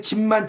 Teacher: 콧소리 앞에서 비읍도 미음이 된다는 거죠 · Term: 비음성